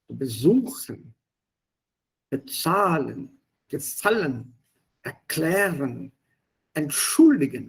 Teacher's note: Die Betonung liegt auf der zweiten Silbe, also auf das Verbstamm, on the verb itself, not on the prefix.